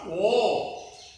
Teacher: It is not one matra. Okay. The duration is taking 2 times. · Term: 2 matras